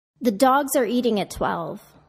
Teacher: Notice how I connect the plural S to the word that follows and how I de-stress the function words, such as transforming the of into an uh, to create linking and music in my speech.